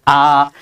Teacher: যেহেতু নিম্নে অবস্থান করতেছে, জীবের উচ্চতা অনুযায়ী এটা নিম্নে অবস্থান করতেছে, সো আ ধ্বনিকে বলা হবে নিম্ন অবস্থিত বিবৃত স্বরধ্বনি